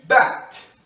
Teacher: Se pronunciam da mesma forma, mas o som do T é voiceless. As cordas vocais não vibram, como em bat.